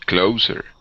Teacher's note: the S in this word is an unvoiced S. So instead of closer with a Z sound, it's closer.